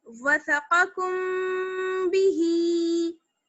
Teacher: एक अलिफ के बराबर ठहरेंगे क्योंकि गुन्ना होगा, नाक में आवाज जाएगी, प्लस इख्फा होगा, आवाज को छुपाना भी है और होंठ मिले हुए होंगे आपके · मीम साकिन की जो आवाज है उसको गुन्ने के साथ और इख्फा के साथ पढ़ेंगे, ये कहलाता है हमारा इख्फा यानी छुपा लेना।